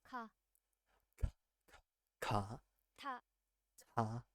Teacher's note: These consonants are pronounced with a strong puff. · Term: aspirated consonants